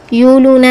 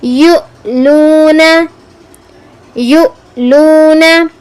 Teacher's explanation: یؤلونا میں حمزہ کو جھٹکا دینا ہے. یؤلونا، یولونا نہیں پڑھنا.